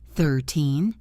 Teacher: 13 has the stress on the second syllable.